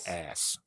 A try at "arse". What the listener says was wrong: That sounds like you're saying ice. Ice. Oh, okay, arse. Now I hear the difference.